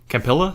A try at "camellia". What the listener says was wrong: No, there's no P. It's a camellia.